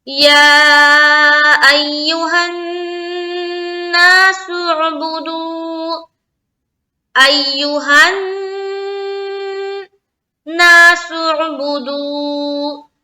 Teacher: تو یہاں پر ہم کریں گے نون مشدد کا غنہ